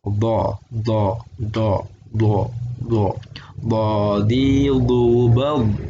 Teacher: tapi mulutnya agak bulat sedikit, dan dia kayak ngomong oh. Jadi bo. Nah, posisi lidah itu yang belakang atau pangkalnya agak nepi ke salah satu bagian giginya. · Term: huruf do